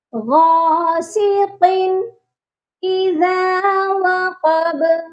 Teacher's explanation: وقب کے قاف کو بھی موٹا کرنا ہے اور با پر قلقلہ ہوگا کیونکہ با حروف قلقلہ ہے.